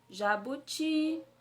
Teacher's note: Então, o ti é a minha sílaba tônica